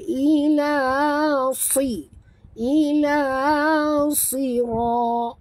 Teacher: Suat ni kenapa kita kena tebal? Kerana kalau kita sebut tipis maka dia jadi sin